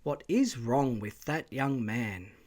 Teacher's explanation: What is wrong is now a separate tone group.